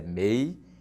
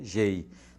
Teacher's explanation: Pode ver que a sílaba tônica de palmeiras é mei e a sílaba tônica de gorjeiam é gei.